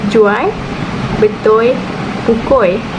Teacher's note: Dalam dialek Kedah pula disebut sebagai jual, betul, pukul, iaitu L, fonem L berubah menjadi fonem I